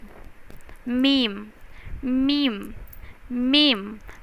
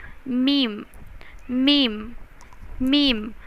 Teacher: मीम की आवाज़ जो है वो इस तरह से निकलेगी कि दोनों होंठ बंद होके खुलेंगे और मीम की आवाज़ निकलेगी।